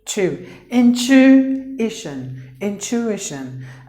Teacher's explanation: So the TU, not to, you have to pronounce it like chu.